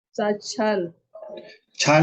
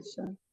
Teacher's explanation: नीचे वाला लाइन नहीं, दोनों लाइन में क्ष है ना, याद रखिए। क्ष इज इक्वल टू क आधा क प्लस मूर्धन्य श।